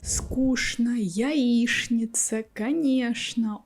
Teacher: All this stuff some people pronounce with the sound Ш.